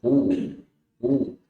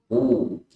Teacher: Qaf itu huruf tebal ya. U. Jadi jangan sampai sama seperti huruf kaf. Ya, jangan bukan ku, tapi u.